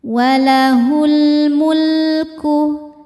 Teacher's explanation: Selanjutnya ada alif lam qamariah. Karena alif lam bertemu huruf qamariah yaitu mim. Maka lam dibaca izhar atau jelas.